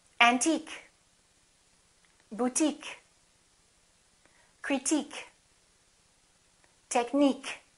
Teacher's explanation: if the word ends with ique we stress the suffix